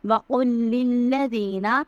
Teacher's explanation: وقل کا جو قاف ہے وہ حلق سے ادا ہوگا، للذین میں دال کو نرمی سے پڑھیں گے۔